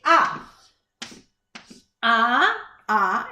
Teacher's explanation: It's a central vowel and our tongue is down because we're opening our mouth. Like when we go to the doctor and we do and it tells us to look in our throat.